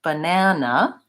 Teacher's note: the middle syllable is the stressed syllable. It's longer and it has the clear vowel. The other two are shorter, reduced, and they have a reduced vowel, the schwa sound, the sound.